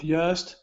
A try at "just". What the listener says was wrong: Now you are pronouncing the J with the Spanish J saying just. Okay, this is just. Try that.